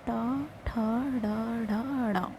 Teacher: टा वर्ग के जितने भी वर्ण हैं वो सब हमारे मूर्धा से उच्चारित होते हैं। टा, ठ, ड, ढ, ड़।